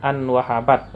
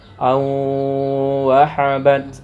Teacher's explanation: Maka an wahabat misalnya kan, awalnya kan an wahabat, maka dimasukkan ke nun sukun ini ke dalam huruf wawu dengan cara mendengung, atau wawu ini seperti ditasdidkan serta mendengung. Contohnya an wahabat awalnya, maka dibaca au wahabat. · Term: idgham bi gunnah